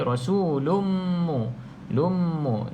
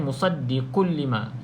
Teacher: idgham bila gunnah, kita masuk tanpa dengung.